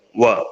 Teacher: അറബിയില് 2 ചുണ്ടുകളും വട്ടത്തിലാക്കിക്കൊണ്ട് വായാണ് പറയുക, വ. അപ്പൊ അക്ഷരം ഏകദേശം ശബ്ദം ഒരേപോലെയാണെങ്കിലും മലയാളത്തിലുള്ള മഖ്റജ് അല്ല അറബിയിൽ വരിക. · അറബിയിൽ രണ്ട് ചുണ്ടുകളും വട്ടത്തിലാക്കികൊണ്ട് വയാണ് പറയുക